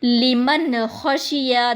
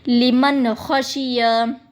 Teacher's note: دیکھیں نون کی آواز میم نون زبر من، نون کی آواز آ رہی ہے کیونکہ نون ساکن کے بعد خا آیا ہے